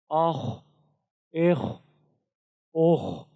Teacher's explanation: خا کے اندر بھی صفت حمز ہے، تو اس میں بھی ہماری جو سانس ہے وہ جاری رہے گی۔ اخ اخ اخ۔